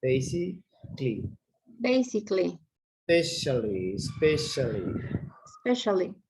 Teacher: they don't pronounce the A